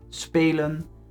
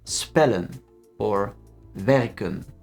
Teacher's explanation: one consonant is pronounced long, spelen, and two consonants is pronounced short, spellen or werken.